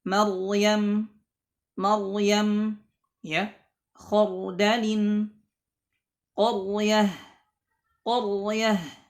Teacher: Nah, jadi ra-nya sukun. Sebelumnya ada huruf yang berharakat fathah, maka ra-nya dibaca tebal.